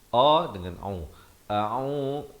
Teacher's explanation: hamzah berbaris fathah bunyinya a dan ain berbaris dhammah dua harakat bunyinya au. A'u, a dengan au, bukan au dan juga bukan a'u ya.